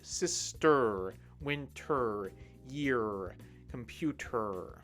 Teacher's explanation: The sound is that deep UR sound at the end of all of these words